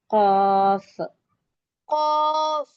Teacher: قاف کو بھی موٹا اور کھینچ کے پڑھیں گے، قاف۔ اور اس کا مخرج جہاں سے ہماری تارخ شروع ہو رہی، تارخ کی جڑ اور زبان کی جڑ، نرم جو حصہ ہوتا ہے وہ آپس میں جب ملتے ہیں تو اس کی صحیح آواز نکلتی ہے، ق ق۔